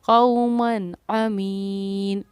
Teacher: قومن من کے لاسٹ میں جو نون آ رہا ہے اس کو سمپل ہم نے ظاہر کیا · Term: نون کو ظاہر